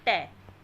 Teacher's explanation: मूर्धन्य व्यंजन है, ये ओष्ठ नहीं है।